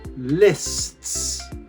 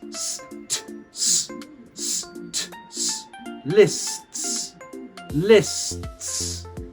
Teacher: I go from st So the tongue sits behind the teeth in the s, and then it hits the back of the teeth. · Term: three consonants